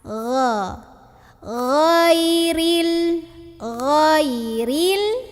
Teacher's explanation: Di huruf ghain biasanya dibaca go, padahal nggak ada go, nggak ada huruf g. Harusnya gha dari tenggorokan paling luar, paling atas. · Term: Gin